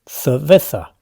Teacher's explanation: In the north, locals speak with distinción, making a crisp difference between the S sound and the soft C or Z, like the English th